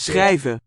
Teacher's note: in Dutch it's a cluster, a sequence of s and ch, and now here also followed by a r